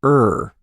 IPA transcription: ɝ